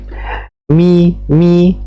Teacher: gunah yaitu suara dengung yang keluar melalui rongga hidung · ada dengungnya tib mi mi ya kalau kita rasakan huruf Mim ketika mengucapkan huruf mim maka ada seperti getaran pada hidung kita karena ada aliran suara yang mengalir melalui hidung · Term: gunnah